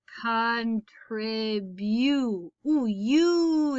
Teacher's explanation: we're listening for that long vowel sound where the vowel says its name